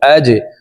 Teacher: Hamza জিম জবর আজ, জিম কলকলার হরফ নিচের দিকে ধাবিত করে ধাক্কা দিয়ে উচ্চারণ করব। আজ।